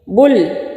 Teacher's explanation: لام ساکن ہے اور ساکن لفظ ایک ہی دفعہ پڑھا جاتا ہے اور وہ پیچھے ملتا ہے